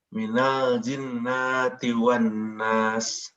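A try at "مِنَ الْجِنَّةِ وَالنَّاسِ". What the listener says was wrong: Ya, nun di sini pendek aja. Minal jinnati wan nas.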